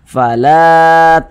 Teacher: lamnya ini memiliki tanda baca fathah berposisi tepat sebelum huruf alif makanya huruf lamnya dibaca panjang Mad thii panjangnya dua harakat